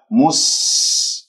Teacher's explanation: يجري فيها الصوت والنفس والصفير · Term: السين